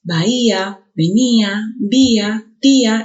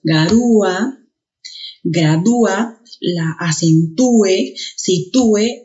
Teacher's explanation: la vocal abierta y la vocal cerrada, en este caso, se han separado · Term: hiato acentual